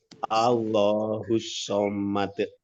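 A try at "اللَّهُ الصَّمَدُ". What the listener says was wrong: Formatnya dicepatkan sedikit ya, tidak ada jeda ya. Allahus somad.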